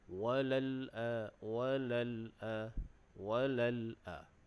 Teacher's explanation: Cuma diingatkan pada huruf lam yang ada sukun tu jangan kita melantun. Biasanya orang baca walal, walal, ada macam le, walal.